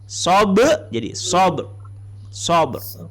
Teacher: Jadi qalqalah tapi lantunnya masuk ke ra.